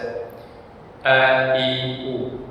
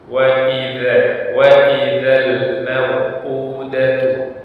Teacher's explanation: Hamzah memiliki sifat syiddah, sifat yang sedikit ditekan pada pengucapan hamzah tersebut. Sehingga ketika dibaca sedikit menekan, maka akan jelas ya, ucapan atau bacaan huruf hamzah tersebut.